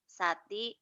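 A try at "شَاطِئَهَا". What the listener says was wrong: shinnya besar syati'aha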